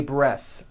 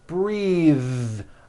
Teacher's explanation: breath is a noun take a breath unvoiced but when you change it into a verb the vowel changes and it becomes breathe